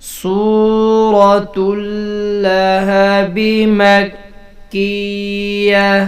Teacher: گولتا وقف کی صورت میں ہا بنا دی جاتی ہے۔ جب بھی کسی لفظ کے آخر میں گولتا آئے اور اس لفظ پہ ہم وقف کر رہے ہوں تو اس کو ہا بنا دیں گے۔